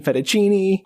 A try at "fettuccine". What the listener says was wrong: Did she say it like that with that Italian accent? You used an Italian accent when you said fettuccine. Yeah, you went fettuccine. But you really did say that like that.